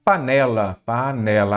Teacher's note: a sílaba tônica é o né. Não tem acento porque terminou em A.